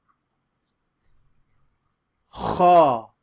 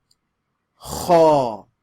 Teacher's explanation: this is like you're clearing your throat almost with an AW sound after it